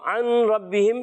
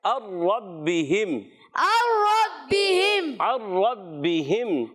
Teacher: اس کو کہتے ہیں ادغام بلا غنہ، اور را پر زبر ہے اور تشدید بھی ہے، ذرا رک کر ادا کرنا ہے، اور را پر زبر آنے کی وجہ سے را پر ہو جائے گا۔